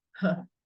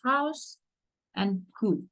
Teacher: The vocal cords are open, but close enough together that air passing between them creates friction noise. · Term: glottal